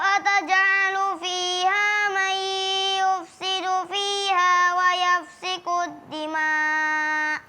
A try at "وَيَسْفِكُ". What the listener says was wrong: Kalimat wa yasfiku, bukan yafsiku. Yasfiku. Tadi keliru antara huruf sin dan fa. Harusnya